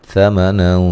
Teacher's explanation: نون تنوین کا موٹا اخفا ہے، غنے کے ساتھ پڑھیں گے